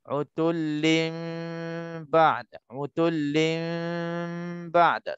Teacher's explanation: antara nun mati bertukar jadi mim, nak berjumpa dengan ba, jangan kita terus rapat waktu kita nak sebut. · Sebelum nak sebutnya ba, seolah-olah kita jangan rapat lagi. Ada je laluan angin yang halus, baru sebut ba. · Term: iqlab